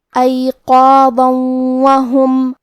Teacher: واو حروف الادغام بغنہ میں سے ہے اور ادغام کا معنی ہے حرف کو حرف میں داخل کرنا، تو ہم یہ تنوین کو واو میں ملا کے غنہ اور تشدید کے ساتھ یہ حکم کو ادا کریں گے